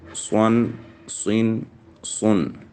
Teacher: स्वाद में सीटी की आवाज़ भी आएगी और पुर भी पढ़ा जाएगा